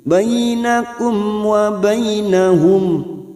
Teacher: Bainakum fathah bertemu ya sukun huruf lain kita lunakkan. Bainakum mim sukun bertemu wawu idhar safawi, mim sukun dibaca jelas tanpa mendengung.